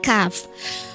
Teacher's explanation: Huruf kaf ini adalah pangkal lidah menyentuh celah antara langit-langit yang tak bertulang